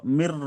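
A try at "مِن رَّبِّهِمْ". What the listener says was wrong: র জবর র বলছেন, রটি বারবার তাজদিদ আছে, যুক্ত করতে হবে।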